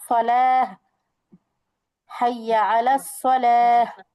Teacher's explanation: এখানে থামাই দিচ্ছি বা অক্ষ করছি, হ্যাঁ? গোলটায় যদি থেমে যাওয়া হয়, মনে করো তুমি পড়তে পড়তে এখানে অক্ষ করবা, থেমে যাওয়া, তখন ওই গোলটাটা হা সাকিন হয়ে যাবে, হা সাকিন।